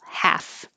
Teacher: Half, no L, just forget the L.